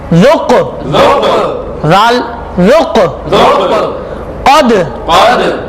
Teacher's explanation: ये कौफ हुरूफे कलकला में से है। आवाज लौटती हुई निकलेगी